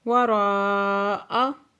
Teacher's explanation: مد متصل ہے، 5 سے 6 حرکت کھینچ کے پڑھیں گے۔